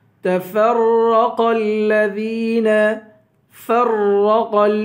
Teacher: فا کو را سے ملائیں گے، سختی کے ساتھ جمع کر پڑھیں گے اور را کو بھی پر پڑھیں گے، قاف کو بھی پر پڑھیں گے. تفرق الذین، قاف کو لام سے ملائیں گے.